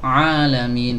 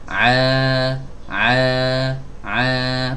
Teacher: eh sama saja mau hidungnya ditutup mau hidungnya dibuka ya itu keluar dari tenggorokan bagian tengah Bukan keluar dari hidung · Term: huruf Ain